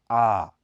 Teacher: इसके उच्चारण में जीभ नीचे रहती है और होठ चारों तरफ फैल जाते हैं मुंह पूरा खुल जाता है